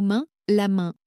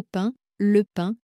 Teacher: le son A, I, suivi de M ou N qui devient nasal.